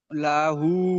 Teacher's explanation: লা টান হবে না আর হা টান হবে তাহলে লাহু হবে